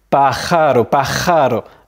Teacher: tu as à la fois le R du J et le R qui est simple